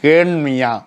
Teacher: கேல் என்பது கேன் என்று மாறும். வருமொழி முதல்ல மெல்லினம் வந்தால் அந்த லகரம் இருக்கிறதே, நாம் அடித்து சொல்லக்கூடிய நகரம் நாம் அடித்து சொல்லக்கூடிய நகரமாக மாறும்.